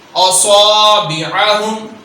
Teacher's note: اصا کو لمبا کریں گے کیونکہ الف حرف مدہ ہے، یہاں الف سے پہلے والے حرف پر اگر زبر ہو تو وہ حرف دو حرکات کے برابر لمبا کیا جائے گا، تو صاد کو اب دو حرکات کے برابر ہم لمبا کریں گے۔